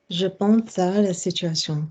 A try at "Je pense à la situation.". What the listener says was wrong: There you go.